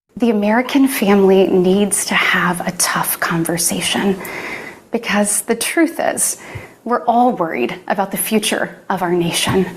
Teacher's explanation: a little bit High and um very characterized by emotionality like it sounds like they're almost going to cry like there's a shakiness in there · it sounds a little bit breathy a little bit High and um very characterized by emotionality like it sounds like they're almost going to cry like there's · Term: baby voice